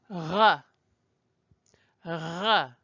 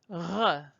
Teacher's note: It's in the wrong part of your mouth. The r is at the back of the mouth. R. It's up here, almost to the place where you would be gargling.